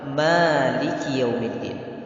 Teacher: Kita tidak boleh menghilangkan sifat lin pada kalimat yaumi. Harus ada sifat lin di situ, lembut. Tidak boleh kita gas.